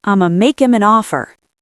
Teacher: I am going to make him. Drop the h in him. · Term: ultimate reduction